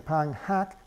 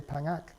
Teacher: the H gets deleted between a nasal and a vowel.